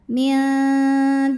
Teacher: cara bacanya ditipiskan jadi bunyinya la pangkal lidah datar · Lam pada lafaz Allah atau lam jalalah dibunyikan secara tarqiq sebab huruf sebelumnya berbaris kasroh, maka cara bacanya ditipiskan. Jadi bunyinya lah, pangkal lidah datar. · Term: tarqik